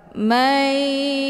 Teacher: Cara bacanya, nunnya dimasukkan ke dalam huruf ya atau dileburkan dengan cara ditekan kemudian ditahan lebih kurang 2 kali ketukan. Mayu, ya. Hukum bacaan idgham bi ghunnah dibacanya sambil didengungkan.